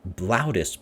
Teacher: second syllable is also heavy because it's a short vowel followed by more than 1 consonant. We have the est, like est, loudest. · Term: heavy syllables